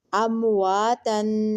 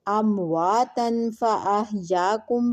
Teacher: نون کی آواز چھپا کر ناک کی ہلکی آواز گھننے کے ساتھ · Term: اخفاء